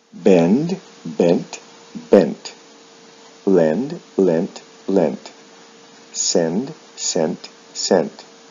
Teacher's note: there is no vowel sound shift in the past and the past participle, but the final D sound is changed to a T